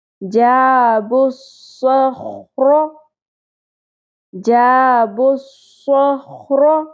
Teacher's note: پر کرنے کے لیے زبان کی جڑ کو اوپر حلق کی طرف اٹھائیں گے لیکن ہونٹوں کو گول نہیں کرنا